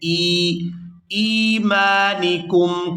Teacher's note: یہاں حمزہ کو یا ساکن کے ساتھ ملائیں گے تو ان کو کھینچ کر ادا کریں گے